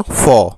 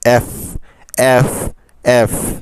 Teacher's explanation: মনে রাখবেন উপরের দাঁত আর নিচের ঠোঁটে মিলে হয় এফ। এফ এফ। আর এই ঠোঁট এবং দাঁতের মাঝ দিয়ে কিছুটা বাতাস বের হবে।